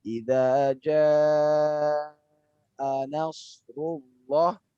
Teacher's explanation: Lalu pada saat nas, membaca sedikit panjang